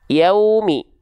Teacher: asyafatain itu adalah kedua bibir dengan posisi maju seperti mengucapkan huruf u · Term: wau